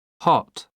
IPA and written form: hɒt (hot)